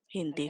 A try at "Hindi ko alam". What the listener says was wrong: Why you add the H so hard?